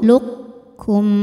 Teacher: huruf qafnya masih ada sifat tebalnya dulu, yaitu sifat isti'la. Jadi qaf masukkan ke kaf namun tidak menghilangkan sifat tebalnya. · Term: idgham mutaqaribain yang naqis